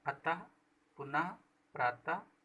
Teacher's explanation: विसर्ग, इसका उच्चारण हा की तरह होता है।